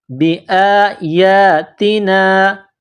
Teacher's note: کرنا ہے، وکذبوا بآیاتنا، بآیاتنا، حمزہ کے اوپر کڑا زبر ہے، یا کے اوپر کڑا زبر ہے، ایک الف کے برابر اس کو کھینچ کر پڑھیں گے